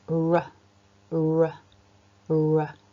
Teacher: as I'm making that sound the tip of my tongue curls up and backwards it's not touching the top of the mouth but it's almost making this gesture this movement as if I'm